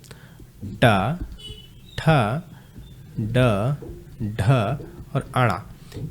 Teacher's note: ये ट वर्ग पूरा का पूरा कहां से बोला जाता है? मूर्धा से।